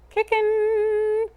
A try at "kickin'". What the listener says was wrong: instead of the N, I want a little more vowel.